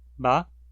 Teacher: a indução de um tom baixo pode causar um tom ascendente médio, de baixo para médio, ba. E um tom alto induzido num médio pode causar um tom descendente médio, de alto para médio, pa.